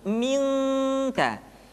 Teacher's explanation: Ketemu kaf, maka dominan kepada huruf eng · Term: ikhfa